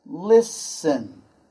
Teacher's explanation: in this particular word, the T is silent